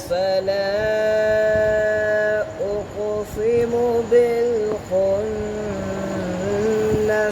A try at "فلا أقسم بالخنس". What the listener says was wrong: आपने उक़सिमु मोटा पढ़ दिया सीन को भी। हाँ फ़ैल अच्छा मैं रिपीट करता हूँ फला उक़सिमु बिलखुन्नस